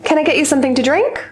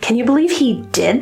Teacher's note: I want you to say this out loud along with me and feel the singing going high at the end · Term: Rising intonation